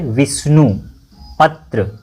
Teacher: इन दोनों शब्दों में वी और प पर बल पड़ रहा है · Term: वर्ण बलाघात